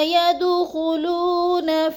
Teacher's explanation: ید کی دال کو ہم نے ہلا کے پڑھنا ہے، ساکن ہے اور حروف قلقلہ میں سے ہے